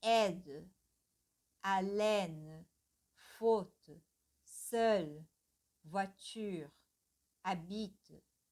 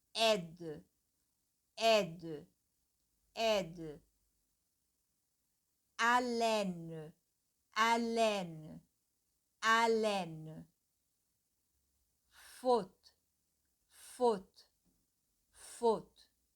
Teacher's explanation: quando uma palavra termina com a letra E, então essa letra ela fica muito sutil, muito leve, quase inaudível